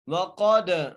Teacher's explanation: قاف کو موٹا کر کے دال پر قلقلہ کر کے